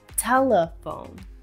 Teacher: we usually stress the first syllable and the following vowel sound would be a schwa